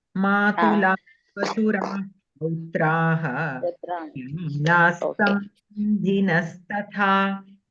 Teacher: whenever there is this visarga followed by sakara, then you have to pronounce the visarga also as a sakara